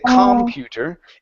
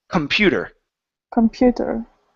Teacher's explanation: the stress is on Pew it's not on com